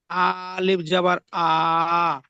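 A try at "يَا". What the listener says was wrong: আ নয়, ইয়া। ইয়া আলিফ জাবার ইয়া।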